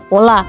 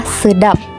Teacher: bila di akhir kata fonem tidak bisa diucapkan secara lepas bibir kita akan tertutup untuk mengucapkan bunyi tersebut